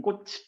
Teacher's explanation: 치읓으로 썼으나 디귿으로 소리 나는 현상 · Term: 음절의 끝소리 규칙